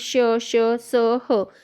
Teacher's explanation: उच्चाराच्या वेळी जोरात हवा बाहेर घर्षण होते त्यामुळे याला घर्षक वर्ण किंवा घर्षक असे म्हणतात